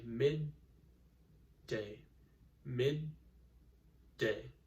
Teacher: day now if you try saying that slowly you notice that when you stop in the middle between the two D's your tongue goes to the roof of your mouth to make that D sound and it stops there for just a second and then we let it go so we say mid day · there are two Ds, but we can't really just draw the D sound out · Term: doubling